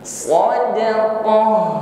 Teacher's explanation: Ta marbutoh menjadi ha ya, seperti atau sebagaimana huruf ha biasa sadaqah. Maka tambahkan sifat huruf ha-nya, ada hamas, ada angin ya, nafas, dan bunyi huruf ha-nya alirkan.